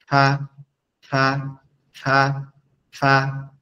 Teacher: ফাটা হচ্ছে আমাদের জিউবার সরি জিবার আগা না। ফা হচ্ছে আমাদের সামনের উপরের দুই দাত নিচের ঠোঁটের পেটের সঙ্গে।